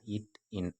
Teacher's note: நாவின் நுனி அன்னத்தின் நுனியை தொடுவதால் பிறக்கும் எழுத்துக்கள்